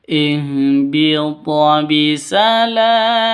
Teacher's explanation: qalqalah di tengah seperti ini namanya qalqalah sughro. Agak rendah pantulannya.